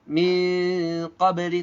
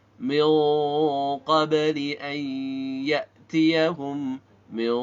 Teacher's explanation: ketika gunnah antara nun bertemu dengan qaf harus tebal suara ikhfa-nya. Bukan dibaca min qabli, tapi min qabli an ya'tiyahum min, bukan mi, tapi min.